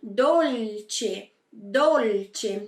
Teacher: Mas em italiano, não funciona assim. Então, a gente coloca a ponta da língua lá no céu da boca e pronuncia bem esse L